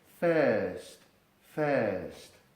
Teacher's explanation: Ese sonido respondería a un símbolo fonético que veremos rápidamente en futuras entregas, en el que la I se lee como E y la R se hace muda y convierte a la E anterior en doble vocal